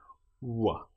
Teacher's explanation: Now, this one is unusual in that our lips don't fully touch for this sound, and our teeth aren't really involved. W. We we make our lips into a very close circle W.